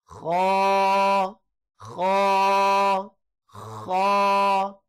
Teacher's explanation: یہ حلق کے اوپر سے ادا ہوتا ہے، جہاں پہ آپ کا گلا جو ہے وہ مکمل طور پر ختم ہو رہا ہے، یہاں سے حلق شروع ہوتا ہے اور اوپر یہاں تک بالکل اینڈ میں جا کے حلق جو ہے وہ ختم ہو جاتا ہے۔